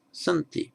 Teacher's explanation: in certain parts of the verb the initial ah drops off